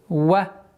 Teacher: Звук вау не является твердым